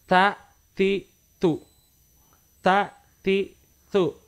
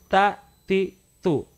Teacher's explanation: Seolah-olah ada huruf S yang menyempil di antara huruf T dengan A, T dengan I, dengan T dengan U. Ada huruf S yang menyempil tipis sekali. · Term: huruf ta